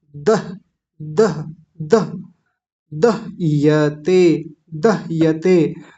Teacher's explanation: ह आधा है तो जल्दी बोला जाएगा